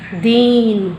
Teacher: तो द में बड़े ई की मात्रा, तो देखिए ई से डबल टाइम लग रहा है उसे बोलने में